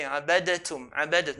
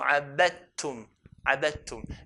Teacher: Okay, no qalqala. Dal will not be pronounced, but would have merged onto the ta.